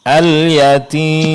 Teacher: Ketika berhenti bunyi sukun pada mim itu jelaskan Ibu ya.